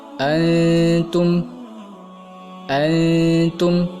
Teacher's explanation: Nunnya harus samar, tidak boleh jelas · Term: ikhfa